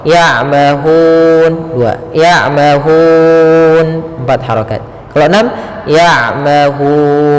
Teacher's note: Maka biasanya ketika huruf akhir datang sebelumnya huruf mad, baik itu alif maupun ya ataupun waw, maka dinamakan dengan mad arid disukun. Cara membacanya yaitu kita panjangkan hu-nya, boleh 2 harokat, boleh 4 harokat, dan boleh pula 6 harokat.